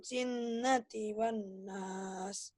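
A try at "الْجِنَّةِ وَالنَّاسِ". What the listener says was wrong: Pinter.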